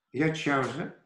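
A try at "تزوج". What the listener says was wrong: Tazawaja. Zonder de ja aan het begin. Tazawaja. Tazawaja.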